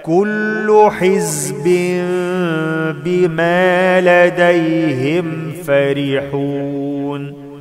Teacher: أخلي بالي من حرف الزاي علشان ما أقلبهوش لسين